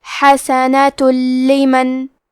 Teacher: ہم تنوین کو لام میں ملا کے بغیر غنہ سے لیکن تشدید کے ساتھ یہ حکم کو ادا کریں گے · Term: ادغام